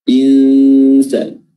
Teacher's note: Kita samarkan huruf nun dengan cara meletakkan mulut kita, posisi lidah kita di makhraj huruf sin. Insan, bukan insa. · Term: ikhfa hakiki